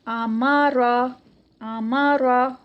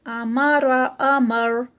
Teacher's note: آمارا، آمارا، را یہاں پہ نا اس کو ہیوی کرنا ہے، یہ ہیوی ہے یہ فرسٹ میں، تو اس کو یہاں پہ اوپر ہم ایچ لکھ لیتے ہیں کہ یہ پتہ چل جائے کہ یہ ہیوی ہے، کیونکہ میں نے بتایا تھا کہ را جب زبر کے ساتھ آتی ہے اور پیش کے ساتھ آتی ہے تو موٹی پڑھی جاتی ہے